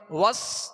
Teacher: سین کو سختی کے سیٹی کی آواز میں اور باریک پڑھیں گے